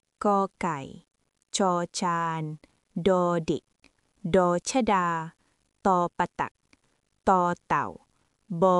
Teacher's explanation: Bunyi biasa atau plain ialah konsonan yang tidak disertai hembusan angin kuat apabila disebut dan bunyi kedengaran lebih pendek